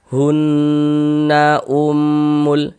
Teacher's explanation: Ini hunah hun itu kita tahan sejenak suaranya kita panjangkan. Hunnya yang kita panjangkan bukan nanya. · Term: ghunah musyaddadah